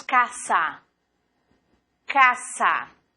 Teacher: sempre som de dois S. Não existe som de Z no espanhol. Então, decimos casa.